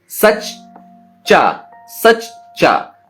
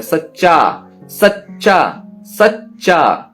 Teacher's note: तो सच, हम सच्चा जब बोलते हैं तो पहले सच बोलते हैं, चा आधा रहता है, तो मतलब आधा चा हम सा के साथ मिलाकर बोलते हैं